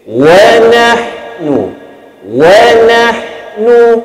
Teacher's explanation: Na masih lagi baris fathah bunyinya na. Dia tidak dia tidak akan jadi no.